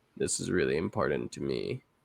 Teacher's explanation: Doesn't sound important to me because it's all kind of at one note. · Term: vocal fry